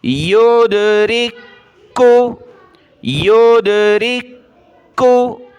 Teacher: دیکھیں را کو میں نے ملایا دوسرے کاف کے ساتھ، دو کاف ہیں یعنی دو حرف ایک جیسے جمع ہیں. پہلا ساکن ہے، اس کو چھوڑ دینا ہے، دوسرا مشدد ہے، اس کو پڑھنا ہے. تو را کو دوسرے کاف کے ساتھ ملا، یہ دونوں باریک کاف ہیں تو پتلا کیا جائے گا، اس کاف کو باریک پڑھا جائے گا.